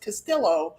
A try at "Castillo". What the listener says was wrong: No, it's supposed to be Castillo because it's Hispanic name. Double L always reads as Y. Castillo.